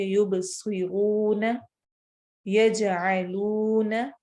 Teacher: واو مدہ جب بھی واو ساکن سے پہلے والے لفظ پر پہلے والے حرف پر پیش آئے تو اس واو کو 2 حرکت لمبا کر کے پڑھتے ہیں اور اسے واو مدہ کہتے ہیں